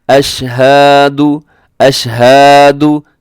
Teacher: सबसे पहले अशहदु, अशहदु को क्या लोग करते हैं, अशहदु, अशहदु, यानी हा को साथ वो अलिफ भी अपनी तरफ से ऐड कर देते हैं और लंबा कर देते हैं। तो देखें इसको, यानी अपनी तरफ से बिला वजह लंबा करके हम सुर लगाते हैं, तो ये दुरुस्त नहीं है।